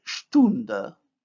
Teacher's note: The vowel u is plus back plus round. When we add the suffix which contains the front vowel, the stem vowel becomes also front.